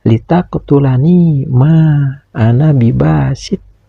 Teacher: Huruf qaf sukun ini harus dibaca qalqalah, yaitu qalqalah sugro, karena disukunkannya huruf qaf ini berada di tengah bacaan.